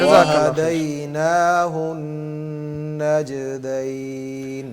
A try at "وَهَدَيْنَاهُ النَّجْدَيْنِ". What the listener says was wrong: جلدی نہ کریں. جی غنہ پورا کریں.